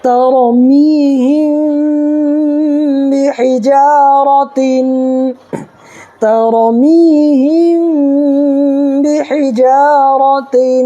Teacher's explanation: میم ساکن کے بعد با آئے تو گنہ کے ساتھ اخفا ہوگا